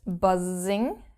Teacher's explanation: our German s is different from the English one because it is very very soft it is actually more like a bee buzzing